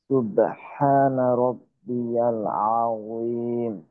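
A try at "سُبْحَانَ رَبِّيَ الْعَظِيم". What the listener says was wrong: আপনারও কিন্তু আইন একটু সময় নিল। আর একটু ছোট করে,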